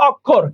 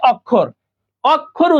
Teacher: অক্ষর উচ্চারণটা ও হয়ে গেছে, এই অটা এখানে দেখো ও হয়ে গেছে